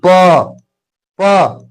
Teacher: प प प बोलने में ओठ लग रहा है